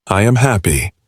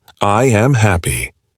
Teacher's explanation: If you raise your voice on happy, I am happy, it shows excitement and genuine emotion.